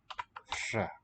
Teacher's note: So they have a voiceless R spelled R-H.